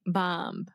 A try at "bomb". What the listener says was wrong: You're still saying a B at the end. Okay, so say the word mom.